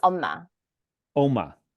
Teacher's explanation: Yeah, the stress is on the first syllable.